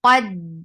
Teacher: دا light رہے گا، قاف کی وجہ سے دال کو ہیوی نہیں کرنا